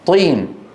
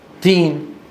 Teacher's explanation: نفس المكان لكن الطاء مفخم التاء مرقق